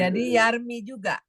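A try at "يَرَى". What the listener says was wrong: Enggak. Yarmi kan i. Nah, yardo.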